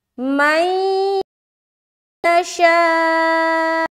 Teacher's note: نون ساکن کے بعد حرف یا آ گیا، یہاں پر ہم ادغام ناقص یعنی کہ غننے کے ساتھ ملائیں گے